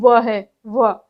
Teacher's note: दंत प्लस ओष्ठ, दांत और होठ को मिलाकर जो बोले जाते हैं, उ उ नहीं, सॉरी, दंत प्लस ओष्ठ व है, व।